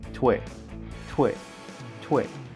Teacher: We have an explosive T, then we have W, combined with the sound E.